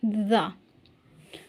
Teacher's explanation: जबान की नोक को बाहर निकाले थोड़ा सा और उसके बाद ऊपर के दांतों की नोक से लगाकर पढ़िए द जबान की नोक को थोड़ा सा बाहर निकालना है और · زبان کی نوک کو باہر نکالیں تھوڑا سا، اور اس کے بعد اوپر کے دانتوں کی نوک سے لگا کر پڑھیے زا۔ زبان کی نوک کو تھوڑا سا باہر نکالنا ہے اور جو آگے کے اوپر والے 2 دانت ہیں اس کے جو نیچے والا کنارہ یعنی نوک ہے اس کے ساتھ لگانا ہے اور زا کا مخرج ادا کرنا ہے۔